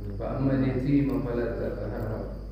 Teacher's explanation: Fa'amma mimnya tasdid itu gunnah harus ditahan.